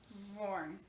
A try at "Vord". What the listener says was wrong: Lord, no N, but use a V. Vord. Like Lord. Lord.